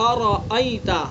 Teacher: حمزہ کا مخرج اقصائے حلق، را کا مخرج زبان کا کنارہ اور کچھ زبان کی پشت، جبکہ ملے ثناء علیہ رباعی کے مسوڑے سے۔